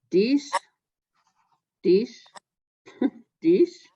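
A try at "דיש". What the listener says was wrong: It's a shin. It's a shin. SH.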